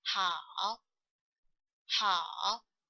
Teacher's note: When the third toned character stands by itself, or its position is at the end of phrase or sentence, the complete third tone is pronounced.